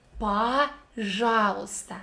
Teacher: letter O sounds like A in this word because it is without emphasis